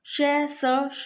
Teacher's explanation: ये श और ये स और ये स है के उच्चारण में मुख्य अंगों के परस्पर निकट आने से वायु मार्ग संकीर्ण हो जाता है तथा हवा घर्षण संघर्ष के साथ निकलती है, इसलिए इन्हें संघर्षी व्यंजन कहते हैं।